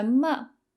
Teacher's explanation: Ma is neutral tone, so you don't want to put any emphasis on it.